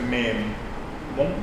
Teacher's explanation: luego escucho una O que es un poco más cerrada que la O del castellano. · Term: O un poco más cerrada